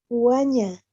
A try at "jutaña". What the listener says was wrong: Jutaña. Ya, la T te falta, ¿no? Jutaña. No es Juaña, Jutaña es.